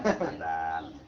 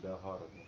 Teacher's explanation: kalau orang Sunda biasanya azan aja adan kan